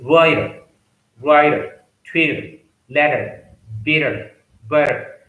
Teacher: In the same way, Americans T sound, when T is sandwiched between two vowel sounds, Americans pronounce it as D sound, like writer, writer, Twitter, letter, bitter, butter.